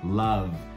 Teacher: love termina com som de V. E V a gente vibra a garganta